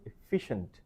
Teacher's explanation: Stress should be on the second syllable.